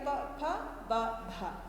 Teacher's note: ಈ 4 ಅಕ್ಷರಗಳನ್ನು ನಾವು ತುಟಿಯ ಸಹಾಯದಿಂದ ಉಚ್ಚಾರಣೆ ಮಾಡ್ತೇವೆ। ತುಟಿಯ ಸಹಾಯದಿಂದ ಉಚ್ಚಾರಣೆ ಮಾಡೋದ್ರಿಂದ ಇದನ್ನು ಓಷ್ಠ್ಯ ವರ್ಣಗಳು ಅಂತ ಹೇಳಿ ಕರೆಯಲಾಗುತ್ತೆ।